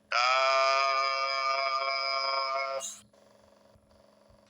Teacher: কফ, কাফ, এই হরফটি বলতে চার আলিফ পরিমাণ লম্বা হবে, জিহ্বার গোড়ার একটু আগে তালুতে লাগবে, স্বাভাবিক উচ্চারণ হবে, শেষে উপরের দাঁতের আঘাত নিচের ঠোঁটে লাগিয়ে যাবে।